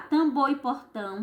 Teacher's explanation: tambor e portão são oxítonas porque as sílabas tônicas são as últimas